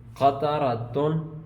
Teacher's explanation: قاف اس میں حروف مستعلیہ میں سے ہے، را پہ زبر ہے، اس کو موٹا کریں گے